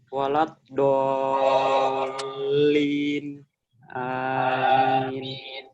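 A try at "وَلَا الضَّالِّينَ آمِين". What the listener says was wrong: Nah, itu tashil. Nah, bukan kita nggak mengomentari di pengucapan selain huruf hamzah ya. Oke, yang kita komentari adalah pengucapan hamzah.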